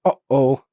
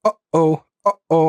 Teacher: in between uhoh, there's that little pause. That is a glottle stop.